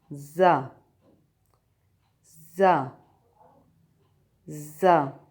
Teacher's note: زبان کی نوک سامنے والے نیچے کے دانتوں کے اندرونی کناروں سے لگا کر زا ادا کیا جاتا ہے